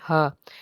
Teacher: یخادعون اللہ، ہا زبر ہا، ہا جو ہے حروف حلقی کا حرف ہے، حلق کے نچلے حصے سے اس کو ادا کریں گے